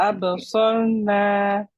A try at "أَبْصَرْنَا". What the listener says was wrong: The itbaq on the Sad is a little bit reduced now. أب, nice and light. أبصا, أبصرنا.